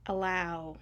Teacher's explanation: Allow. The a is actually a schwa.